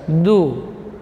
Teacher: Kemudian dal huruf syiddah dan jahar. Du, ujung lidah di usul sanaya, di pangkal gigi seri atas